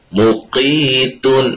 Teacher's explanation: یہ قاف موٹا ہے، اور اس کو جب ادا کرنا ہے تو اگلے حرف جو کہ تا ہے اس کو ہم باریک پڑھیں گے، اس کو بھی ساتھ موٹا نہیں کرنا ہے۔ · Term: تا باریک